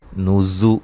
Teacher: زا کو سختی سے سیٹی سے ادا کریں گے